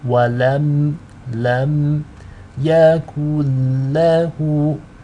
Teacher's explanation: The meme sakina is light and it's read with izhar or clarity.